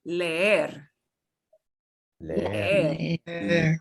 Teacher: instead of making the e very short, like we normally do, we drag it out